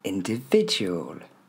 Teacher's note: Ok, vous voyez, on a une série de E. Tous ces petits I, il ne faudra pas les dire I, c'est bien le son E. In, D, V, il porte l'accent tonique.